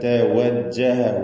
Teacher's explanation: വാവ് ചുണ്ടുകളിൽ നിന്ന് തന്നെ വരണം.